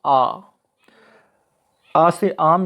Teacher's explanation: जिन स्वरों के उच्चारण में मुख द्वार जो है वो पूरा खुलता है, जैसे कि आ से आम यानी आ जो है वो विवृत है, इसमें पूरा मुख खुलता है, तो इसको हम विवृत स्वर कहते हैं।